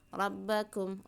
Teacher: Ya ayyuhan nasu budu mad tabi'i ya, dua harokat, waw sukun diiringi dengan dhammah. Rabbakum, ra-nya ditebalkan ya, tafkhim